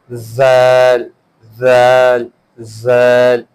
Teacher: Just like sa, the sound it makes while reading it, the upper side edge of two teeth. The tip of the tongue touches upper side, upper edge of teeth.